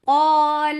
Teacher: Qaf is heavy, so alif is heavy too. Whenever alif is with qaf, a heavy letter, it will be heavy.